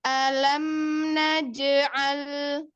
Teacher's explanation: Pelan-pelan, di sini ada mim sukun ketemu dengan huruf nun. Mim sukunnya punya sifat bainiyah atau tawasud, maka dialirkan setengah mengalir.